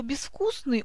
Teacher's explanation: А вот слово «безвкусный» у нас является исключением, потому что в приставке мы пишем букву «з», но она у нас обозначает глухой согласный «с»